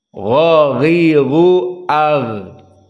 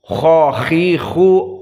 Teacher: maka gha makhrajnya makhrajil halq dari kerongkongan, dan dia adnal halq beserta temannya kha, maka kha dan gha makhrajnya wahid, makhraj yang satu.